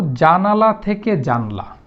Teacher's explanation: তাহলে জানালা, এখানে দেখেন শব্দের মাঝে একটা আকার আছে, কিন্তু ওই পাশে গিয়ে এই আকারটা লোপ পেয়ে গেছে। এই যে শব্দের মধ্য থেকে একটা আকার লোপ পেয়ে গেল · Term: স্বরলোপ